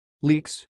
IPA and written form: liːks (leaks)